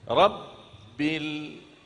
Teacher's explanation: Rabbil, tekankan ba, tetap tekan ba karena ada tasdid kan? Rabbil. Terus masuk langsung sambung ke huruf lam.